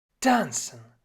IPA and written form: ˈtant͡sn̩ (Tanzen)